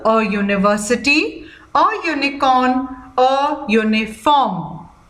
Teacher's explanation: Children, please note that the word university, unicorn, uniform, the letter starting is with U, but when we pronounce it, the sound is of U, which begins with the consonant Y